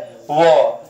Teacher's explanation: दांत और ओष्ठ की सहायता से बोले जाते हैं वह व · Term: दंतोष्ठ